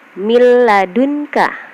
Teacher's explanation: Contohnya di sini miladunka, nun mati bertemu dengan lam. Jadi nunnya dibaca dileburkan tanpa didengung ya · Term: idgham bila gunah